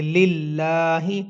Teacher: للہ یہاں پہ لام کے اوپر کھڑی زبر ہے، لیکن اس سے پہلے والا جو لام ہے اس کے نیچے زیر ہے، تو اس لیے لام کو موٹا نہیں کریں گے بلکہ باریک کر کے پڑھیں گے